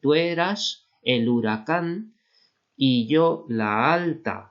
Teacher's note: cuando la segunda vocal es abierta, tónica, como la alta, ¿no? No suena bien una sinalefa, no podemos hacer la alta. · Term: no hay sinalefa